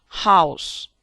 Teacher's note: H. Voiceless glottal fricative. House.